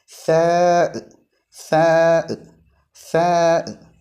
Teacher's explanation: നാവിന്റെ തല മേലെ മുൻപല്ലുകളുടെ അടിയിൽ വെച്ചുകൊണ്ടാണ് ഉച്ചരിക്കേണ്ടത്